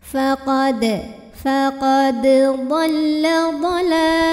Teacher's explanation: huruf qalqalah yaitu dal yang sukunnya asli dan ada di tengah bacaan. Maka dibacanya dipantulkan kecil ya. Jadi walaupun ini mirip bunyinya ya, tidak dimasukkan ke dhad ya.